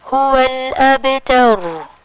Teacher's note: پچھلی حرکت فتح ہے تو اس فتح کی وجہ سے اس رو ساکن کو موٹا پڑھا جائے گا، هو الابتر۔